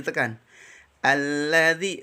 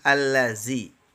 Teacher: Alladzi itu ada syiddah ya, ada tasdid. Di situ harus ada naber ya, nabrah, ditekan.